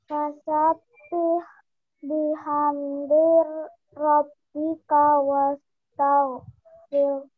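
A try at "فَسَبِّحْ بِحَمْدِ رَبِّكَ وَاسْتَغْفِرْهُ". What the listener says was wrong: Oke, sip. Alhamdulillah.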